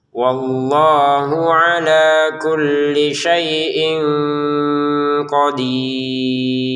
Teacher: Wallahu di sini Allahnya panjang, kemudian haknya yang pendek.